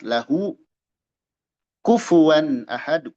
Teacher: izhar halq dibaca jelas tanwin menghadapi hamzah